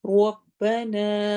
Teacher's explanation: ربنا رو کو موٹا پڑھنا ہے، الف پہ الف مدہ کرنی ہے.